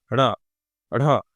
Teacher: उत्क्षिप्त व्यंजन का मतलब बस इतना सा है कि आपकी जीभ जो है ना, वो ऊपर टकराई और झट से नीचे आ गई, फिर हवा बाहर निकली।